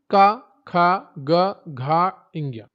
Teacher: का वर्ग, कंठ, गला से उच्चारण होता है